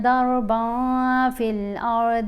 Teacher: یہاں را اور داد کو پر پڑھیں گے